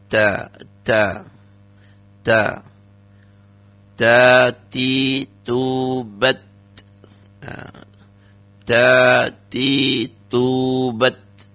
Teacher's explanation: Hames itu harus mengeluarkan desis sedikit saja, jangan terlalu berlebihan sehingga nanti dikhawatirkan berubah suaranya ya. Jadi keluar tambahan bunyi seperti sin atau bahkan mungkin seperti C, ya, jangan sampai berlebihan juga. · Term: hamesnya